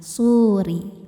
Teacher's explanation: ketika diwasolkan, ro-nya ini kan akan tetap kasrah, maka ro-nya tipis atau tarqiq.